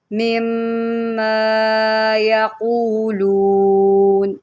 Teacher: میم مشدد ہے، میم کے اوپر جب یہ تین دندان والی شکل آئے تو ہم فوراً غنہ کرتے ہیں۔